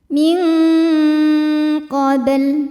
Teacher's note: Unzila min ada hukum ikhfa ab'ad sebab nun sukun menghadapi huruf qaf, maka nunnya disamarkan menuju qaf disertai dengung dan dengungnya banyak ya, suara yang masuk hidung banyak.